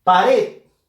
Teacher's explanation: Fuerza de voz en la sílaba red. Última sílaba de la palabra. Termina en D.